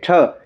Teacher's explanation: जीभ है ना वो आपके मुंह के ऊपर के मतलब बीच में ऊपर की साइड में टच होती है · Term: मूर्धन्य